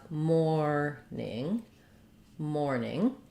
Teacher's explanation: we have first syllable stress